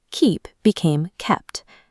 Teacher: Keep is a weak verb that added a dental suffix, but over centuries of use, the internal vowel physically shortened in the mouth. Because the root ends with an unvoiced p, the suffix naturally shifted from a duh to a t sound.